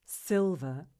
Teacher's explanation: we place the stress on the first syllable